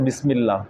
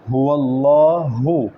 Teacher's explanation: یہاں لفظ اللہ سے پہلے زبر ہے، تو اس کو پر کر کے پڑھیں گے یا موٹا کر کے پڑھیں گے۔ هو اللہ، آخر میں ہا ہے، اس کو بھی بھاری ساؤنڈ کے ساتھ حلق کا آخری حصہ جو سینے کے ساتھ ہے وہاں سے ادا کریں گے، ٹھیک ہے؟